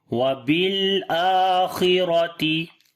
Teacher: خا کو موٹا پڑھیں گے، را کو بھی موٹا پڑھیں گے